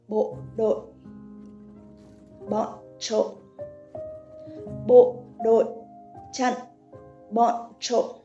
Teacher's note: you should keep your voice as low as possible and short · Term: dấu nặng